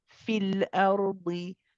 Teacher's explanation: You would not recite the ya in continuation.